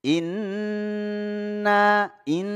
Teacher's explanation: musyaddadah ini kita baca gunnah ya didengungkan Inna Jadi dua harakat ya didengungkan jadi masuk suara hidung ya disebut gunah